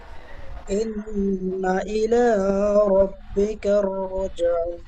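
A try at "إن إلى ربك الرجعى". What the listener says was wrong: রুজআ, একালিপ টান দেবেন।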